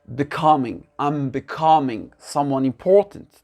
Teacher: L'accent tonique, il se fait où? Sur la deuxième syllabe.